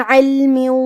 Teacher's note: کلمت علم میں حرف العین کی ادائیگی حلق کے درمیان والے حصے سے ہے، پھر یہاں لام ساکن ہے لہذا ہمیں لام کو ظاہر کرنا ہے.